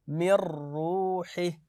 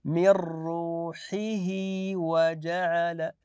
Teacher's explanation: لما نقف نقول من روحه فقط لما نصل ناتي بالياء